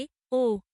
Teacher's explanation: জিভ নিম্ন স্বরধ্বনির তুলনায় উপরে এবং উচ্চ স্বরধ্বনির তুলনায় নিচে থাকে